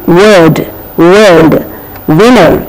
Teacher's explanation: a symbol but there is a very clear difference that is when we are pronouncing w we have to bring the lips closer lip rounding